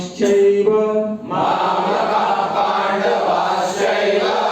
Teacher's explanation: पांडवा शैव मामक पांडवा शैव मामता पांडवास य ध्यान दीजिए का विसर्ग के बाद प है तो विसर्ग का उच्चारण नहीं होगा